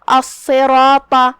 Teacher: کلمت الصراط میں یہاں صاد پہ تشدید ہے تو ہم 2 حرف کے برابر صاد کو پڑھیں گے اور اسے تفخیم سے بھی، کیونکہ صاد حروف تفخیم میں سے ہے. را پہ بھی زبر ہے تو را کا حکم ہے تفخیم · آخری میں طا ہے، طا بھی حروف تفخیم میں سے ہے تو ہم یہ پورے کلمہ کو تفخیم سے ادا کریں گے